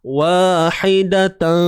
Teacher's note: Dengung yang berlaku di sini perlulah dalam keadaan yang nipis sahaja, ringan sahaja. Sebab apa? Sebab dia bertemu dengan huruf fa yang memang bersifat nipis.